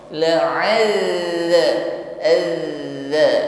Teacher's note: huruf dzal tetap ngalir, tidak boleh tertahan. Juga tidak boleh dipantulkan. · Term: rakhawah